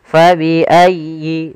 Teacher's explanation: sempurnakan di lafal ya yang tasydid karena dia ada bacaan linnya yaitu ayyi tasydid ditekan